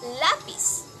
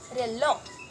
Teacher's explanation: Ito ay ang ibabaw ng dulong dila ay dumidikit o naglalapit sa punong gilagid, kagaya na lamang ng letrang L at saka R. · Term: panggilagid o alveolar